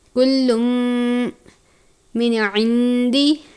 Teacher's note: نون ساکن کے بعد عین ہے، عین حروف حلقی میں سے ہے، اظہار کا قاعدہ لگتا ہے، یعنی نون ساکن پر غنہ نہیں کریں گے۔